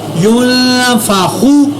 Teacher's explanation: میں نے نون کے اوپر اخفا کیا حروف اخفا کی وجہ سے، اور خوا کو میں نے پر ادا کیا